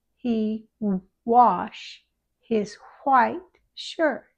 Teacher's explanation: important to make the WH have extra air and no vibration.